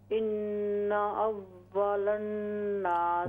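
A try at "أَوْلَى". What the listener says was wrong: वाव साकिन है। इन औलन, औलन नासी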